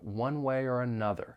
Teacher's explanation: the word or is often reduced and when that happens the vowel sound's going to change slightly instead of or it may sound more like er